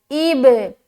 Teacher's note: تو یہاں پر با کے اوپر جزم ہے اور با حروف قلقلہ میں سے ہے، تو جب ہم حمزہ کو با سے ملائیں گے تو ہم قلقلہ کریں گے، یعنی کہ اپنی آواز کو ٹکرائیں گے۔